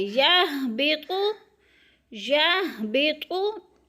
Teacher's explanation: हा भी मोटे हरूफ में से है और तो भी मोटे हरूफ में से है, पुर करके पढ़ेंगे